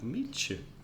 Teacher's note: the meet you becomes almost like a ch in the middle